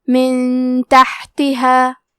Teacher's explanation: یہاں حکم ہے اخفاء تو ہم یہ حکم کو غنہ کے ساتھ ادا کریں گے